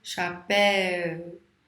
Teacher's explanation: O mais forte é o E e não o U. Então, primeiro veio o som mais forte, o E, depois a semivogal o U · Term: ditongo decrescente